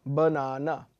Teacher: the second syllable is the one that is stressed, and the third and the first are slightly less stressed.